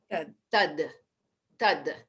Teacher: place your tongue right at the front top teeth and release it down and say the word tad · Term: dental sound